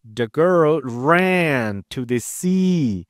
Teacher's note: by stressing the words ran and sea, I use contrastive stress because the other words in my sentence don't carry the stress, only ran and see.